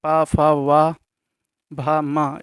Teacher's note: इन व्यंजनों का उच्चारण करते समय ओष्ठ परस्पर सट जाते हैं, इसीलिए इन्हें ओष्ठ व्यंजन कहते हैं।